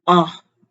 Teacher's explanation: starts out loud but drops sharply to the bottom of the tonal range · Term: fourth tone